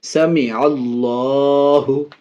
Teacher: اللہ کے لام سے پہلے عین میں زبر، اس لیے اللہ کے لام کو پر یعنی موٹا پڑھ رہے ہیں۔